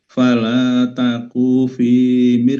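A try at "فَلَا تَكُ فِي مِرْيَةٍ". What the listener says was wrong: Fala taku fi, kunya pendek. Fala taku fi, kunya pendek.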